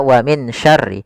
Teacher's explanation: huruf nun ketemu dengan huruf syin adalah bacaan Ikhfa itu disamarkan nunnya kepada huruf syin · Wa min syarri, ada bacaan ikhfa pada lafal min syarri, yaitu min sya, langsung dilafalkan ke sya. Nunnya kita samarkan kepada huruf shin, maka dia hanya baca wa min syarri.